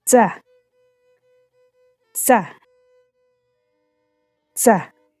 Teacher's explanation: A diferencia de la TH, la lengua no se coloca entre los dientes, sino detrás de ellos. Es como decir T y S al mismo tiempo, sin pausa entre ambos sonidos. · La TS es una consonante africada dental sorda. Su pronunciación combina dos sonidos producidos de manera continua, primero una T y de inmediato una S.